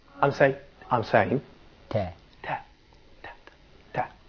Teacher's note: So you cannot find any vibration here at your larynx.